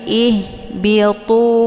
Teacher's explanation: Tu dibaca panjang, ada waw sukun sebelumnya harokat dhammah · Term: mad tabi'i zahiri